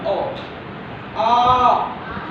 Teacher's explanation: आ पूरा मुंह खोलना पड़ रहा है टाइम देना पड़ रहा है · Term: दो मात्रा का समय